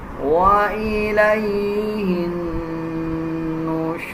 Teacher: را کو پر پڑھیں گے، جب وقف کیا جائے گا تو را کو موٹا پڑھا جائے گا